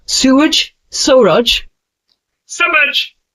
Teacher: the tongue touches the teeth lightly while pronouncing. It's a soft S sound, like in the English word.